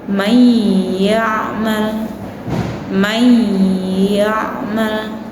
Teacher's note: May yaal nun bertemu dengan huruf ya. Maka dibacanya masuk ke dalam huruf ya disertai dengan dengung. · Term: idgham bighunah